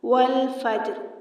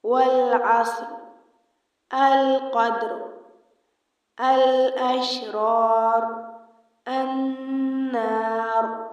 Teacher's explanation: والفجر کلمے پر وقف کرتے ہوئے را پر سکون عارضی کیا گیا، والفجر۔ اسی طرح دی گئی تمام مثالوں میں را کے اوپر عارضی سکون ہے۔